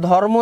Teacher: চাচ্ছে যে র কে আমি আসতে দিব না কারণ হচ্ছে কি র এক জায়গা থেকে উচ্চারিত হয় ম আরেক জায়গা থেকে উচ্চারিত হচ্ছে উচ্চারণ স্থান আলাদা তো এখানে কি হয়ে যায় ম এর শক্তিটা বেশি থাকায় কি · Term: সমীভবন